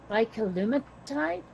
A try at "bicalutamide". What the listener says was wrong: Yeah, and you got you doubled the T, but otherwise it's great.